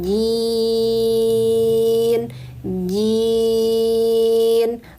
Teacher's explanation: Nah, di sini ada tanda waqaf maka jin jin panjangkan dulu kasrahnya baru sukunkan nunnya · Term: Mad arid lukun